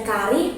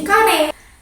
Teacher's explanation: vokal I berubah menjadi e dari kari menjadi kare